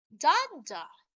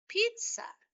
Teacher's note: having the stressed syllable in the first syllable and unstressed in the second syllable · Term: troic